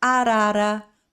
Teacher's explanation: a gente pelo menos respeitar um pouquinho a mecânica da língua, porque se você em português fala normalmente, né, não tem dificuldade para falar arara para querer, então você tem esse toquinho da língua no céu da boca